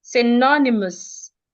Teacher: The word is rightly stressed on the second syllable.